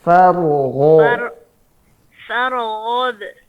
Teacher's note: Catatan ya, sebelum ba tadi ada gho. Ya, gho-nya alirkan dan tebalkan.